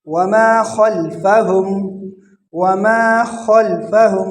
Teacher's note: خا کو موٹا کر کے پڑھیں گے